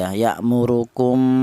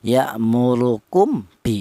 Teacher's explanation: tadi yammurukum tadi ada mim mati di mana mim mati ini berjumpa dengan khba ini dibaca ikhfa safawi apa artinya ikhfa ikhfa itu artinya samar yang mana yang dibaca samar yang dibaca samar adalah mim mati tadi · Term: ikhfa syafawi